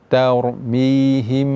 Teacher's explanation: cara membacanya, mim itu tidak dibaca dengan izhar, juga tidak dibaca dengan idgham ke huruf ba-nya. Ya, jadi bacanya tarmihim, him disertai dengan dengung. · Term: ikhfa syafawi